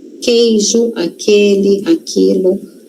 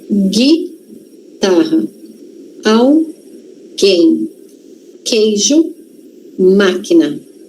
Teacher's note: Percebam que o U não é pronunciado, tá? Porque é um dígrafo a gente tem duas letrinhas com um único som.